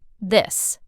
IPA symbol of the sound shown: ð